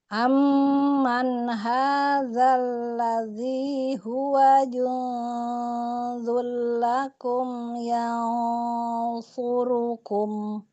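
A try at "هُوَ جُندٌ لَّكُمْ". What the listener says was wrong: Dalnya coba syiddah lagi. Huwa jundu. Syiddah lagi. Jadi jelas dia kuat ya di makhrajnya ya. Kalau syiddah itu kan kuat deh sifatnya.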